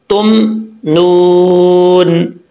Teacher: अब अक्सर लोग यहाँ पे मीम पढ़ते वक्त अगर मीम के ऊपर साकिन जज्म हो तो मीम में कलकला कर जाते हैं, तुम नून पढ़ जाते हैं, ऐसा नहीं करना, कलकले से बचना है। तुम नून, दोनों होंठ आपस में मिलेंगे तो मीम पढ़ा जाता है, तुम नून। अगर मिलकर फौरन जो है वो दोनों होंठ खुलेंगे तो इसका मतलब वहाँ पे कलकला हो गया है, तो कलकले से बचना है आपने।